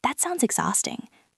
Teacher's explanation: My voice starts high on that, drops on sounds, and then emphasizes the middle of exhausting. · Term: melody